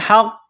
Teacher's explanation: ہا گلے کے درمیان سے ہا کو نکالنا ہے، پڑھنا ہے